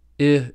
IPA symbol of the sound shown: ɪ